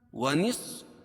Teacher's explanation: صاد کو موٹا پڑھیں گے کیونکہ حروف مستعلیہ میں سے ہے